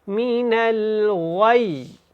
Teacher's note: من الغی، من الغی، اس کا جو وقف ہے غی نہیں ہوگا، اور یا کو جب آپ نے ادا کرنا ہے تو اس کے اوپر شد ہے، تو آپ اس کی تھوڑی سی مقدار بھی بڑھائیں وقف میں